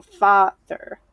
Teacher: So when we say this word, we're going to be stressing the FA sound. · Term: stressed